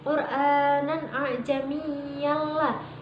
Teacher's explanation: Huruf idgham bilahuna itu ada dua, yaitu lam ro. Cara membacanya memasukkan huruf depan tanpa berdengung